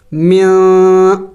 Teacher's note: اخفا کہتے ہیں ناک میں آواز چھپانا. من نہیں پڑھیں گے یہ نون کو ظاہر کر کے نہیں پڑھیں گے بلکہ نون کو چھپائیں گے.